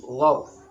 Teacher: Gharqa, ra ini dibaca tafkhim, ghar.